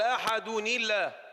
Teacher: الدال وضحت لأننا ضممناها، ولكن هي مقلقلة أيضا فيها جهر وشدة